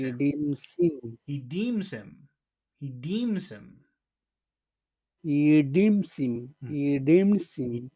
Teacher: so deem is very big and he and him become very very small